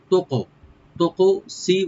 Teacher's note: তুকসিতু, তাটাকে আমরা দমা দিয়ে কাফে যে এখানে সাকিন আছে, কাফটাকে আমরা একটু কলকলা করে ইকু করে পড়বো